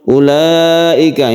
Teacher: ulaika ini adalah mad wajib muttasil karena wajib maka dia itu harus panjang